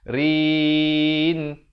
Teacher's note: Kanu kafirin. Rin jadi, ro-nya jadi nipis di sini.